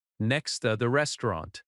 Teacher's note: Next to is another phrase you will hear often, "The bookstore is next to the restaurant." Next to often reduces to nexta.